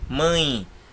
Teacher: Mãe termina com E, mas tem som de I.